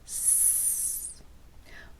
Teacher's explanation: So the only difference between them is whether the voice is off or on. For the s sound, it should basically sound like you're whispering, so no sound should be coming out other than air.